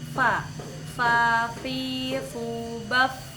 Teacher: Tempat yang pertama yaitu batnu syaffah atau perut bibir. Perut bibir bertemu dengan gigi seri atas akan menghasilkan huruf fa